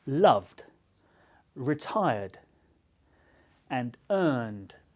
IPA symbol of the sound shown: d